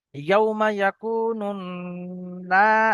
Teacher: না টান হবে, আলিফ মাদ্দা, আলিফের ডান দিকে জবর।